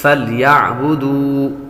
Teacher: واو حروف مدہ میں سے ہے، اس لیے اس کو لمبا کریں گے